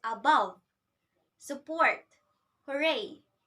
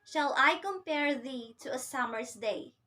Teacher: it follows the rhythm of unstressed syllable followed by the stressed syllable. So it sounds like da-dum, da-dum. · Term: iamb